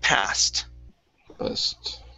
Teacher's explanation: this is an ed ending. Okay, this will sound like a T.